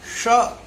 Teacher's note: शुद्ध उच्चारण इसका मूर्धन्य श, क्योंकि इसका उच्चार जो होता है वह मूर्धा की सहायता से होता है।